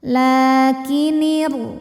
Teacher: alif lam ini tidak perlu kita baca. Atau biasa disebut dengan idgham syamsi, dibacanya dimasukkan langsung ke huruf ra. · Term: alif lam syamsiyah